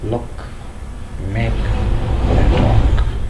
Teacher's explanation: The first T is aspirated, whereas the second T is not aspirated, it is unaspirated. The sound K is also not aspirated in words such as look, make, and rock.